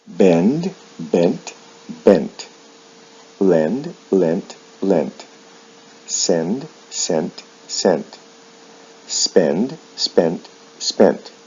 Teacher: With verbs like send, there is no vowel sound shift in the past and the past participle, but the final D sound is changed to a T.